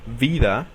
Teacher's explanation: se juntan los dientes superiores con los labios inferiores y se crea el sonido de ve